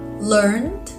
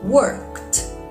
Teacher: in learned the D sounds like d but in worked the D sounds like T but why it's very simple it depends on the last sound